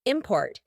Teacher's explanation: in the middle we have that glottal T, import. And then at the end we have a stopped T.